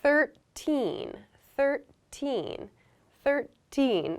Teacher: So again, the TH is unvoiced. 13. So my voice does not begin until the I sound here. There's a little gap, 13.